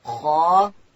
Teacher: خا ادا کیږي د ستوني په سر کښې او خا چې د ډکه ویل کیږي